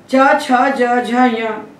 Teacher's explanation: ये तालु से बोले जाते हैं, इसलिए कहलाते हैं तालव्य